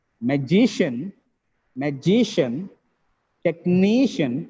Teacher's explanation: there are three syllables second from the last is stress